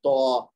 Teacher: لیکن تو جو ہے یہ زبان کی نوک اور ثنایا علیہ کی جڑ کے ملنے سے ادا ہوگا. زبان کی نوک اور سامنے والے جو 2 دانت ہیں اس کی جڑ، تو اور تھوڑی سی موٹی کر کے آواز نکالیں گے تو، تاکہ تا سے ڈیفرنٹ ہو جائے.